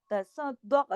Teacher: स्वाद मोटा सख्ती से दाल के साथ जोड़ के, बाकी दाल बारीक